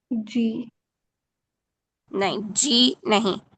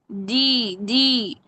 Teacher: جی کر کے وہ آگے آواز پھسل جاتی ہے، جبکہ جیم میں شدت ہے، آواز سختی سے بند ہوگی